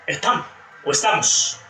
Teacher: Después, aspiración, es un fenómeno regional, aquí va a depender mucho el acento. La S al final, aspirando